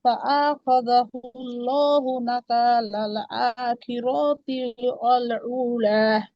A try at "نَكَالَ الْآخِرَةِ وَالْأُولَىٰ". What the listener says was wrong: আখিরাতি রতে টান নাই। নাকালাল আখিরাতি ওয়াল উলা।